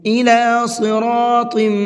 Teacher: صراط کے اندر صاد کو بھی اور طا کو بھی دونوں کو پر کر کے پڑھیں گے